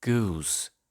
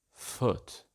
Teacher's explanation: In SSB though, goose is more close, goose, and foot is more open, foot